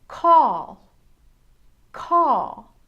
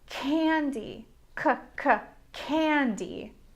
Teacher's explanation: You use a short sharp breath to make the cuh sound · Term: hard C